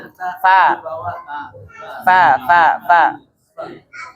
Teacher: Ada bibir bawah bertemu dengan gigi atas. Fa ya. Bertemu dengan gigi atas. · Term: huruf bibir